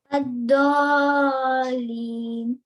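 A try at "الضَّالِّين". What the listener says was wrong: Yeah, you have to make it 6 counts. It was a little short, but it's okay.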